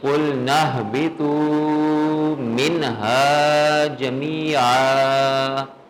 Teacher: ہا حروف حلقی یا حروف اظہار میں سے ما قبل نون ساکن ہے، تو غنہ کسی صورت میں نہیں ہوگا، بلکہ نون کی ساؤنڈ کو ظاہر کر کے پڑھیں گے، اظہار کریں گے